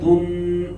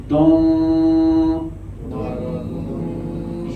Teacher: دن کہنے سے نون ٹچ ہو گیا، ٹچ نہیں کرنا. دن یہ آواز دن، ناک میں چلی جائے گی آواز اوپر یہاں پہ دون، یہ آواز اب آپ نے بالکل پرفیکٹ ادا کی ہے.